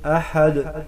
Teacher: قل هو اللہ احد ہا کو گلے کے درمیان سے ادا کریں گے. احد دال حروف قلقلہ ہے، بحالات وقف قلقلہ ہوگا